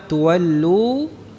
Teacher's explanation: setelah membaca waw mad tuwallu, ini waw mad dari jauf, makhraj jauf